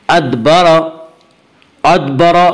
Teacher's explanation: या रा के ऊपर ज़बर है इसलिए रा को पुर पढ़ेंगे।